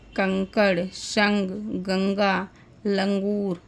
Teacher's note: अनुस्वार वर्णों के उच्चारण में स्वास केवल नाक से निकलता है। ध्यान दीजिएगा कि अनुस्वार वर्णों का जब हम उच्चारण करते हैं तो जो सांस है हमारी वो केवल नाक से ही बाहर निकलती है। · अनुस्वार वर्णों के उच्चारण में श्वास केवल नाक से निकलता है।